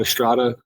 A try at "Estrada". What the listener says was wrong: No, you gotta roll that R, man.